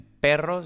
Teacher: en perro simplemente la r vibrante múltiple